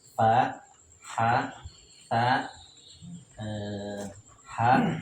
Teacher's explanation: Hamas itu mengalirnya banyak nafas.